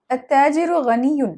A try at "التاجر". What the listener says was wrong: التاجر, التاجر, دیکھو التاجر نہیں پڑھنا چاہیے اب ہم نے, کیسے پڑھیں گے ہم. التاجر, تا بولنے میں زبان کا سامنے کا حصہ ہے جو ہے نا, زبان کی نوک شامل ہو رہی ہے, تو پھر جو ہے نا لام کی آواز کو غائب کر دیں گے. تو التاجر غنی.